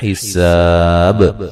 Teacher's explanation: سین کو باریک سیٹی سے ادا کریں گے اور یہ الف مدہ ہے، اور وقفاً بڑی مد کے ساتھ وقف کر سکتے ہیں، اور با پہ قلقلہ کریں گے، وقفاً با کو واضح کریں گے، یعنی کہ قلقلے کو واضح کریں گے.